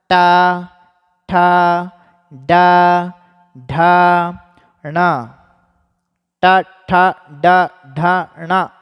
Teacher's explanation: ट वर्ग का स्थान है मूर्धा।